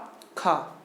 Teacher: खा जो है महाप्राण तो है, लेकिन सघोष ध्वनि नहीं है। क्यों, खा को बोलने पर उतने स्वर तंत्रों में कंपन नहीं होता है